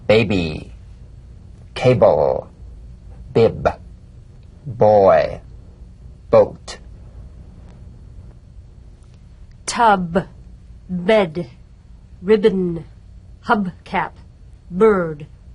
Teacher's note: voiced labial stop or plosive consonant a drumbeat staccato consonant close the lips together gently and let them spring apart lightly